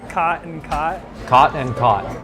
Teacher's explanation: Most people who live here don't pronounce those two words differently